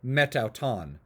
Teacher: the next word after a preposition like meta that ends in a vowel, and then the next word begins with a vowel, what you'll find is that that vowel on meta, that alpha, will drop out, and you'll replace it with the apostrophe. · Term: elision